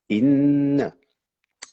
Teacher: la ghunna du noun, la petite mélodie sur le noun